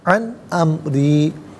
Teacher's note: نون ساکن ہے، اس کے بعد حمزہ حرف علقی، تو نون ساکن کو اظہار کے ساتھ پڑھیں گے، غنہ یا اخفا نہیں کیا جائے گا، را کے نیچے زیر ہے، را کو باریک کر کے پڑھا جائے گا